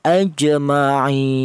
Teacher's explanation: Tul itu artinya panjang, yaitu panjangnya panjangnya itu 3 alif atau 6 harokat atau 6 ketukan